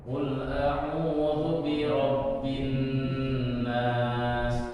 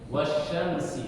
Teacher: Dua ketukan ya. Jadi bunyi gunnahnya itu dua ketukan.